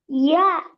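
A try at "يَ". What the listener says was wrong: யா அல்ல ய. அவர் நீட்டணும் அப்படியா? அலிஃப் தான் நீட்டணுமே.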